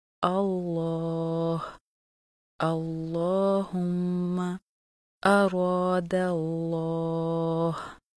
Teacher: لفظ جلالہ اللہ کے دونوں لام ہمیشہ خوب موٹے پڑھے جاتے ہیں